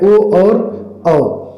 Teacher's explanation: कंठ और ओष्ठ से मिलाकर बोले जाने वाले वर्ण